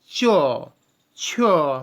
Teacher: জিভের ওপর দিয়ে যেন কিছু প্রাণবায়ু ছুটে আসছে ঘষতে ঘষতে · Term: ঘৃষ্ট ধ্বনি